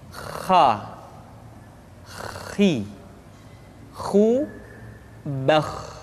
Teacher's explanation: pengucapan huruf k persis terdengar seperti orang yang tidur dalam keadaan mengorok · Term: huruf Kha